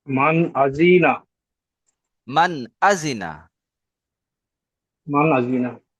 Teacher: নুন সাকিনের পরে হরফে হালকির 6টি হরফের মধ্য থেকে একটি হামজা এসেছে। তাই নুন সাকিনকে বিনা গুণনায় জাহির করে তাড়াতাড়ি পড়তে হয়।